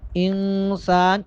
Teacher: نون پر اخفا ہوگا، یعنی آواز کو تھوڑی دیر کے لیے ناک میں چھپائیں گے